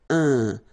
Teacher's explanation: So it's nasal and it's un. So it really goes in your nose. You don't pronounce the M at all.